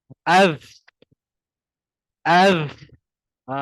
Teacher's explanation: Mula-mula dia macam bunyi Z sikit. Lepas tu dia ada bunyi macam S. Itulah bunyi nafas terkeluar.